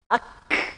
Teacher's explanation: Suaranya tertahan, tapi napasnya masih keluar. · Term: hamas